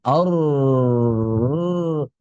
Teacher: getaran lidah ketika mengucapkan huruf ro itu disebut dengan takrir